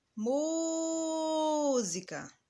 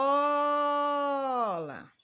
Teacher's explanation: eu demorei mais pronunciando a sílaba mu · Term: sílaba tônica